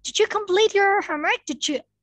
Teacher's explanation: If you have D and Y, okay, I mean, if you have a word that ends with D and you have another word that starts with Y, we sound it as ja. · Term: final D and Y